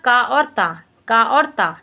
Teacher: 103 number question क्या दिया, question दिया निम्नलिखित में से अघोष अल्प प्राण ध्वनि है। अघोष भी है और अल्प प्राण भी है